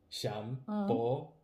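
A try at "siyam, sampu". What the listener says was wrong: Siam? Siam? And then sampo. Don't combine siam and then sampo. Siampo.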